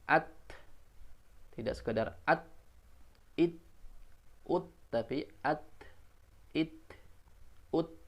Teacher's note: huruf ta ketika sukun khususnya seperti sebagaimana huruf kaf, ya, berikan ruang nafas untuk mengalir